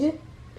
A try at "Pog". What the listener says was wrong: Let's read this word again. There's an O in there.